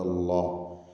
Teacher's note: അള്ളാഹ് എന്ന ഇസ്മുൽ ജലാലയിലെ ലാമിനെ തഫ്ഖീം ചെയ്യണം, തടിപ്പിക്കണം